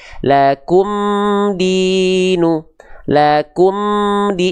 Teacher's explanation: Maka jelaskan mim sukunnya dari bibir, idharkan mim sukun dari syafawi. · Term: idhar syafawi